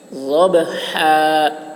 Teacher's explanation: ضاد کی آواز موٹی ہوگی، با میں قلقلہ. ضبحا، ہا کو حلق سے